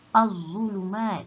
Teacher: Itu namanya idgham syamsiah sebab dia memasukkan. Dia tak sebut lam ni, dia terus masukkan huruf zat. Az-zulumat.